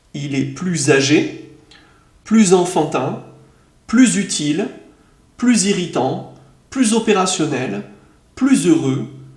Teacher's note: on prononce la liaison avec le son z